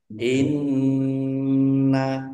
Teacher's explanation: Boleh dua harakat. Nun tasdid dibaca ghunah atau mendengung. Ditahan kira-kira dua harakat biar tampak dengungannya. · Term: gunnah